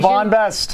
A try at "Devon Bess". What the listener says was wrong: T at the end of Bess.